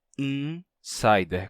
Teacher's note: o N termina nasalizando o I que vem antes dele. E a gente pronuncia insider com I nasal.